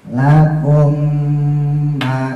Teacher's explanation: mim mati ketemu mimnya idgham ini ya, ditahan dikit lagi